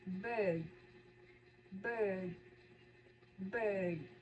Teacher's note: the last one is long central vowel long ear sounds like bird bird.